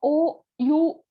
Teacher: पहले तो lip movement का चेंज हो रहा है, then your tongue is also getting rolled, और बैकनेस पे ज्यादा पोजिशन हो रही है